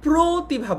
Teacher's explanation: কিন্তু আমরা যেহেতু প্রতিভা বলি অর্থাৎ অটাকে ও এর মতো উচ্চারণ করি, এই কারণেই আমরা বুঝতে পারছি যে এই যে প্রতিভা এটা কিন্তু সংবৃত উচ্চারণ, কারণ অটাকে আমরা ও এর মতো উচ্চারণ করছি